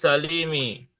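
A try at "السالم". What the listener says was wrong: Sa-nya yang panjang, bukan li-nya.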